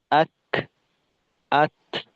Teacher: আক, আত, এভাবে শেষের দিকে বাতাস বের করতে হবে